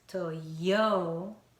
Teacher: Because of American way, yo has the stress, Toyo. And then this TA, American people don't pronounce T as T, but like flapped sound, ra.